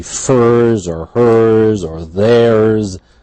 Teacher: always after a retroflex, if it would be furs or hers or theirs, always a z.